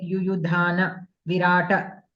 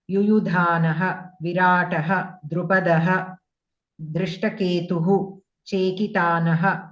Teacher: Since these words are individual words, you can pronounce the visarga completely.